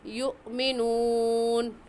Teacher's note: حمزہ ساکن ہے اور حمزہ ساکن پر ہمیشہ جھٹکا دیتے ہیں، تو یؤمنون کہنے کی بجائے کیسے پڑھیں گے یؤمنون۔